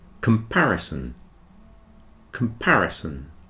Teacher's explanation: four syllables in comparison you'll see the first syllable the pair is very small the third and fourth are kind of medium size but the second one is the big one